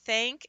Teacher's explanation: it's those front vowels combined with having a nasal sound that distorts the sound of the vowel · say thank but we don't say than we say than and it gets stretched back to be pushed up your nose and you get the a sound